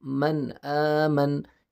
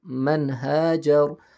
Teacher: یہاں پہ ہم لوگ پڑھ بھی سکتے ہیں، صحیح، من غنہ نہیں کریں گے، کیوں نہیں کریں گے کہ یہاں پہ حروف حلقی آیا ہے۔ صحیح ہے، یہ حروف حلقی ہے، حمزہ ہے۔